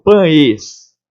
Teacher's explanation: Só que o E, eu falo pães. O E não sai com esse som de E. Esse E sai com som de I. Então, foneticamente falando, eu tenho pães. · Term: semivogal